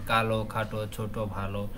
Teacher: বাংলা বর্ণমালার অধ্বনিটি অনেক সময় উচ্চারণের ক্ষেত্রে ও এর মত হয় এবং এই শব্দ শেষের অধ্বনি ওকার দিয়ে লেখা যেতে পারে শব্দের · শব্দের শেষের যে অধ্বনিটা ওকারের মত উচ্চারণ হয় সেটা আমরা ওকার দিয়ে লিখতে পারি পারি যেমন কালো খাটো ছোট